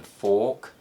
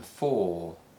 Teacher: the or sound in fork is slightly shorter than the or sound in for